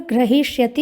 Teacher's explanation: हकार उत्तरवर्ती जो इकार है वो दीर्घ है, ह्रस्व नहीं है